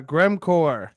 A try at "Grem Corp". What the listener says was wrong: and it's Grem Corp with a P. Grem Corp, Corp, we're already in your computer.